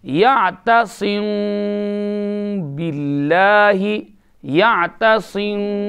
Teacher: جیسے ناک میں آواز لینی ہے کیونکہ اخفاء کی آواز کہاں سے جاتی ہے ناک سے